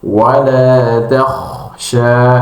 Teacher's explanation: tebalkan dengan cara menaikkan pangkal lidah ya. pangkal yang pangkal lidah yang ada di belakang naik ke atas-atas dan ee kurung ee sebanyak mungkin suara di dalam mulut sehingga terkumpul di langit-langit atas.